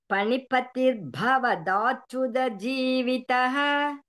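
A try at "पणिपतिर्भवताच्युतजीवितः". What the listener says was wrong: Bhavatachuta, right? Bhavata, it is not da. Tachuta. Ta it is.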